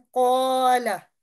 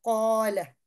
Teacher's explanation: ये कॉफ हमारा thick letter यानी मुफख्खम लेटर है, हर्फ है। और जब अलिफ इसके साथ पढ़ेंगे तो वो भी मोटा इस तरह से अदा होगा